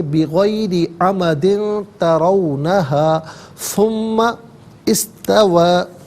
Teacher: ترونا میں را پر زبر ہے، را کو پر کر کے پڑھیں گے